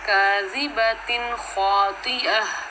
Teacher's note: جی بالکل، یہاں پہ تنوین کے بعد اگلا حرف حروف حلقی میں سے آ گیا ہے خوا، تو یہاں پر اظہار خلقی ہوگا، یعنی کہ ہم نون کی آواز کو ظاہر کر کے پڑھیں گے